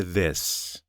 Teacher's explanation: In this, the sound is voiced. You hear and feel the vibration.